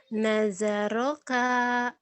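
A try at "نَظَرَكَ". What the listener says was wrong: Nada jangan naja. Nadaroka, nadaroka.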